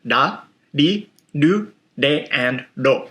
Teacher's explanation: it's a combination of 70% R, 20% L, and then maybe 10% D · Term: Japanese R sound